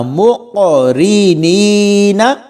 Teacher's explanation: قاف حروف کلکلا میں سے ہے، میم کو قاف کے ساتھ ملائیں گے تو یہاں پر بھی کلکلا کر کے پڑھیں گے · اور یہ کاف دو نقطوں والا ہے، اس کو موٹا پڑھنا ہے، کاف بریک نہیں پڑھنا